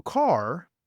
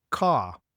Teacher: in Britain, people later started to drop the R sound in some areas, especially London. So car became ca.